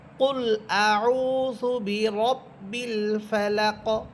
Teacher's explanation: কফ হরফে থামলে কফ হরফেটা সাকিন হবে এবং এখানে কলকলা করে পড়তে হবে, যেহেতু কফ কলকলা হরফ।